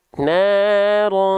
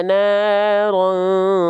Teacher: huruf ta ini dibaca karena dengan vokal A, dia termasuk ke dalam huruf yang tipis